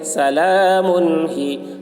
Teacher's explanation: سلام میم کے اوپر تنوین ہے، تنوین کے بعد حروف حلقے میں سے ہا آ رہا ہے، اس لیے تنوین کو ظاہر کر کے بلا غنہ کے جلد پڑھیں گے، اس کو اظہار کہتے ہیں.